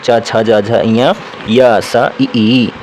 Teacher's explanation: च वर्ग जो होता है यह इसका उच्चारण स्थान तालू होता है